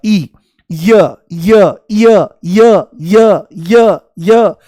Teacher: देखो जैसे ही य बोलोगे तो इ शुरू में महसूस होगा। · जैसे ही य बोलोगे तो ई शुरू में महसूस होगा, ई, य य य य य य य, जैसे सीढ़ी अटक गई हो तो ई की ध्वनि आती है। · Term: अर्ध स्वर, अर्धस्वर